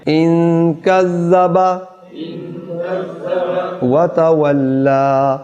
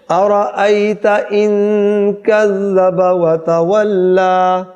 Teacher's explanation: یہ زا نہیں ہے، اس میں سیٹی کی آواز نہ بنے